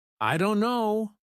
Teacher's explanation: Instead of pronouncing every letter, many native speakers say, "I don't know." The t sound is dropped completely. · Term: dropped sounds